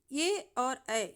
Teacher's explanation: ए और ऐ यह दोनों वर्ण कंठ और तालु से उच्चारित होते हैं।